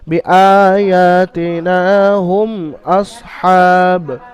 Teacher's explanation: এই মিম সাকিনকে বিনা গুন্নায় জাহির করে পড়তে হবে, অর্থাৎ বিনা গুন্নায় পড়তে হবে, হুম গুন্না করা যাবে না।